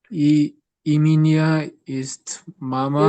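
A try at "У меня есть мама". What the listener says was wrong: ইব্রাত, তো এটা হবে উ, এটার উচ্চারণ করতে হবে উ, উ মিনিয়া, ই মিনিয়া না, উ।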